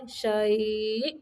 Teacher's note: حمزہ کو جھٹکا دیں گے ساکن کرتے ہوئے